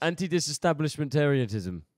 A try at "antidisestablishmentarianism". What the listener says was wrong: Oh, you're putting a T on the end. Where's the T coming from? Not a T. Anti-disestablishmentarianism.